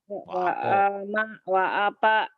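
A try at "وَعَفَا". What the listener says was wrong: Kan orang Betawi bukan orang Sunda. Wapa aja. Itu F. Fanta. Wa'afa. Oh, kayak ini banyak orang Sundanya nih. Wapa weh. F. Wa'afa. Wa'afa. Fanta. F.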